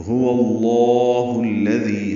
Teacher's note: ہا کو الذی کے لام سے ملانا ہے، دال نرمی سے پڑھنا ہے، دی یا مدہ 2 حرکات لمبا کرنا ہے